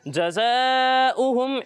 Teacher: مد متصل۔ مد متصل کو ہم 2 یا 2.5 الف تک کھینچ کر پڑھتے ہیں